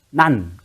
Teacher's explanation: 혀소리 니은은 혀가 윗잇몸에 닿는 모양을 본뜬 것입니다